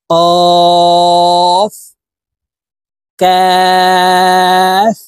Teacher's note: কাফ হরফ জিহ্বার গোড়া থেকে একটু আগে বাড়াইয়া উচ্চারণ করতে হবে